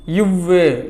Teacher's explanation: கீழ் உதடும் மேல்வாய் பல்லும் பொருந்துவதால் பிறக்கும் எழுத்து